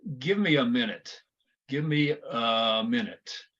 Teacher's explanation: A is going to sound like a schwa.